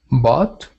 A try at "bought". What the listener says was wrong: So before I heard you say boat, like almost like you pronounced the U part, and actually the AU sounds like bought, just like that.